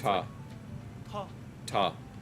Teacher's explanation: makes the soft T sound, but with an added H noise after it. So it's ta. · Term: aspirated ta